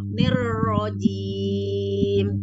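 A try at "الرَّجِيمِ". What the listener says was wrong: Ro-nya tempelkan, lidahnya belum nempel ya, masih ngambang. Nirrojim. Belum nempel soalnya. Coba ditebalkan yuk. Tinggal naikkan lidah belakang. Nirrojim. Belum tebal ya huruf ro PR.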